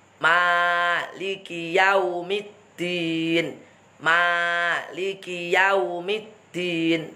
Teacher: Nah, Ma harus mangap juga, jangan menjadi me, tapi ma.